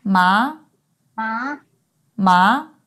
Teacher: The third tone starts off in the lower range of your speaking voice, drops a little, and then rises. The key to making this tone sound correct is to make sure you start off with a low pitch.